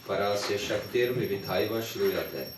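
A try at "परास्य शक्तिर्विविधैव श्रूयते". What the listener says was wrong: There's a little bit Czech language accent. See, in Sanskrit you have to pronounce the E as E, vidyate. In Czech language you pronounce vidyate. Vidyate. Shruyate.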